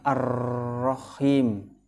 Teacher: hukum bacaannya adalah syamsiah karena ada huruf alif dan lam bertemu dengan huruf ro. Cara membacanya dimasukkan ke huruf ro.